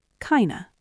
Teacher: The f drops off the word of and we're left with a lazy schwah.